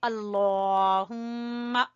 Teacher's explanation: हम लफ्ज़ अल्लाह को मोटा पढ़ेंगे